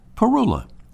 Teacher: the accent is on the first syllable